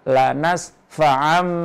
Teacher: itu bacaan iqlab itu juga harus berdengung